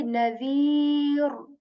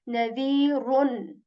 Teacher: we change that into sakin and we say nadir rather than nadirun. We do not articulate this, this dhammatain at the end.